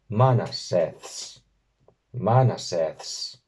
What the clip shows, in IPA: 'ma.na.seːθs